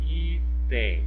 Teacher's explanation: Ó, a sílaba tônica é o I, não foi a última sílaba, né? Por isso que ela não recebe acento, apesar de ter a terminação em EM.